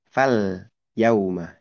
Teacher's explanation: Dari alif lam bertemu ya itu, lam sukun itu dibaca jelas. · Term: izhar qamariyah